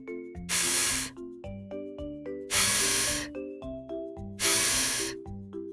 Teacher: the top teeth touch the bottom lip